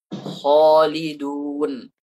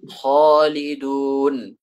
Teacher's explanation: yang paling tebal itu adalah ketika huruf isti'la itu berharakat fathah, kemudian datang setelahnya huruf alif. Kalau huruf isti'la'nya fathah, kemudian ada alifnya. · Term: tafkhim